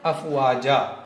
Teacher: ملائیں گے تو بھی پڑھا جائے گا حمزہ اور نہیں ملائیں گے تب بھی حمزہ پڑھا جائے گا۔ اسی کو کہتے ہیں حمزہ اصلی۔